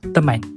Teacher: vokal A menjadi lebih berbunyi nasal atau sengau berikutan pengaruh konsonan senga umum yang terletak di awal dan n di akhir. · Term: penasalan vokal